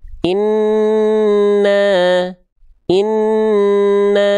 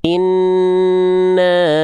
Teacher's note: Mim tasydid atau nun yang bertasydid yang dibaca dengung dua harakat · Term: gunah